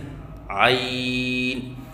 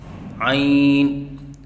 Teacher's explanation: پڑھنے کا طریقہ: عین کو وسط حلق سے ادا کریں اور 3 الف کے برابر لمبا کر کے پڑھیں